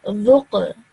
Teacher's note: So instead of saying Dhuq, Dhuq, I'm resting my sound on the Qaf and then bouncing it off a little. So I would say Dhuq. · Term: jerk sound